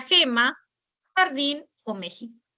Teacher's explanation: la fricativa velar sorda, que puede ser representada por la letra G, la letra J o la letra X